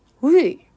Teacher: 입 모양 은 'u' 같지만 , 발음 은 'i' 여야 합니다 . 즉 , 'i' 소리 를 내는 것 입니다 . 그 결과 혀 는 앞쪽 에 위치 하게 됩니다 . 따라서 전설 모음 에 속 하는 모음 은 ' 위 ' 입니다 .